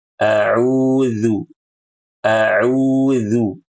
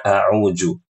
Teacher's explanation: Ujung lidah tempel ke gigi. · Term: huruf zal